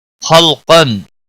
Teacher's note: خا حروف مستعلیہ میں سے پر پڑا جائے گا، لام ساکن کو ہلانا نہیں۔